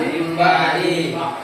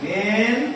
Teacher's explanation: Suara nun sukun dan tanwinnya harus dirubah menjadi suaranya mim. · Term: Mim sukun